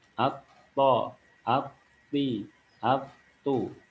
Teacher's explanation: Karena ini huruf to, lidah bagian belakang dan bagian depan semua terangkat, maka huruf to jadi huruf tebal.